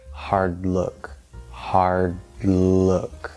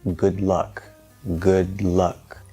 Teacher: you go into that d and we know that the tongue is going to stop the airflow and then we're not going to release the d right so hard we hold it there for a quick moment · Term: stacking effect